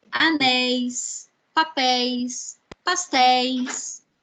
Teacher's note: É um ditongo que é pronunciado abertamente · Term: ditongos abertos